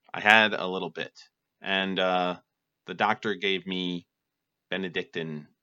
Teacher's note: pretty monotone pretty flat and that's how you would talk to an adult